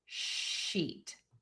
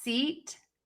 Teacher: the sh sound you have rounded lips and for the s sound you have more smiling lips